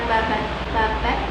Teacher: Misal pada lafal kata babat, babat yang berarti tambo atau babat yang berarti daging terlembu. Bunyi konsonan letupan de pada akhir kata berubah menjadi konsonan homorgan tak bersuara te. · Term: netralisasi